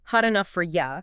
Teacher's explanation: The U at the end gets dropped, shortened, or slurred into a soft ya sound.